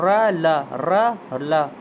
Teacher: दंत मूल दंत मूल यानी दांतों के मूल से